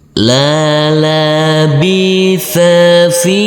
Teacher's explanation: Huruf fa kita baca panjang dengan panjang 2 harokat, karena huruf fa yang berkasroh ini bertemu dengan huruf ya sukun